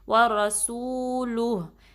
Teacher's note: وا کو باریک رکھیں گے، را کو ہیوی پڑھیں گے. سین کی سیٹی واضح کریں گے اور واؤ کے جو واؤ مدہ ہے اس کو آپ 2 کاؤنٹ اسٹریچ کریں گے.